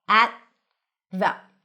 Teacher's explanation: place your tongue on the teeth for the T, at, and then it's already ready for the TH